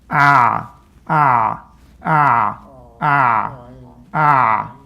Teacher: Part of why it's semi-continuous is because it's vibrating. The ayn is a vibration sound. It's not an airflow sound. It's not about blowing air out.